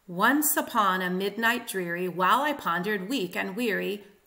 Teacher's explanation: This one is written in trochaic octameter. So it is 8 trochees per line.